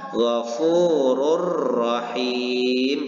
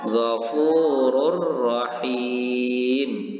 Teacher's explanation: memasukkan bunyi dhammatain ini kepada huruf sesudahnya, yaitu huruf ro, dan membaca huruf ro ini seolah-olah bertasdid dan tidak disertai dengan dengung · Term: idgham bila gunnah